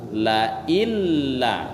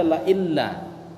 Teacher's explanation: Hilang bunyi nun mati dikarenakan bertemu dengan huruf lam.